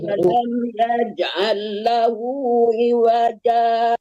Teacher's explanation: berhenti sejenak tanpa melepaskan napas baru dilangsungkan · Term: hukum saktah